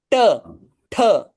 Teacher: ट ठ हा मूर्धन्य आहे म्हणजे आपल्याला जीभ वळवावी लागते वरती टच करावी लागते